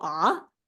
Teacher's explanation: when you say the third tone ah you just go ah like a question